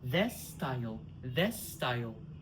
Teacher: We drop the s of this.